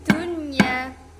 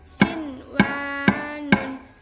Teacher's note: tidak dibaca mendengung dengan 2 ketukan. Akan tetapi hanya dibaca 1 ketukan saja.